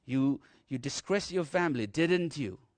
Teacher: If I have a doubt over this particular thing, I would prefer him to answer me, and therefore I would prefer to use a little up, rising tone. So the intonation will rise.